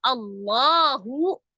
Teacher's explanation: lafaz Allah ada alif lam jalalah. Sebelumnya berharokat fathah, maka lafaz Allahnya dibaca dengan tebal. Allahu, la-nya mad, ya.